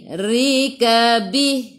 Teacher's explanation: Ri baca dengan baris bawah kena baca dengan nipis. Tarqiq. Rika bih.